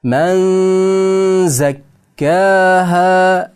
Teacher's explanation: Men endi nun harfni z harfni ichiga kirgizib yorib o'qiymiz. Ixfo qilamiz.